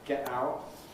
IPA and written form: ˈgeʔ ˈaʊʔ (get out)